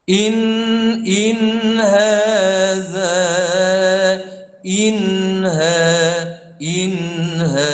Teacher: Nun yang mati itu selepas dia tu huruf yang jauh iaitu huruf halqiah maka tidak boleh didengungkan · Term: izhar